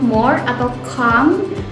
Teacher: ketika mengucapkannya suara diblokir agar tidak keluar dari mulut dan Malah keluar melalui hidung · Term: konsonan nazal